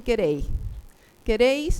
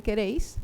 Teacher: a veces pronuncian la S, a veces la aspiran